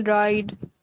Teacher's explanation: ride with a backed, somewhat rounded vowel